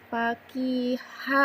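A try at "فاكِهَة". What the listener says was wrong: barusan yang dibacanya kaf bukan kof. Coba, bukan paki tapi paki.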